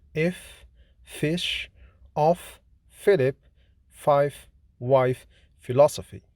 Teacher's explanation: F is voiceless, fortis, labiodental, fricative consonant